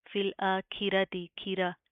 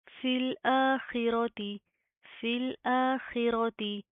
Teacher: हमजा के ऊपर खड़ा ज़बर आ रहा है, एक अलिफ के लिमिट के बराबर खींच कर पढ़ेंगे। ख को ज़ेर के साथ भी मोटा पढ़ा जाएगा, खी, खी। इसको आपने इस तरह नहीं पढ़ना, खी, खी।